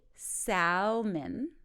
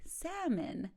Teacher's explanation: letters so here we go don't say Salman it's actually salmon the L is silent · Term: silent letters